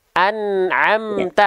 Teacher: Nun sukunnya jangan mantul, ainnya tetap menjadi ain, jangan jadi hamzah.